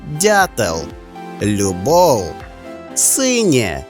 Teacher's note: м'якість або напівпом'якшення попереднього приголосного та один голосний звук